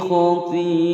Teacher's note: Khati'a panjang lima ketukan atau lima harokat. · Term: mad wajib muttasil